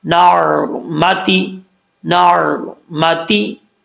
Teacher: عین کو کلیئر کر پڑھیں گے، جھٹکا نہیں دینا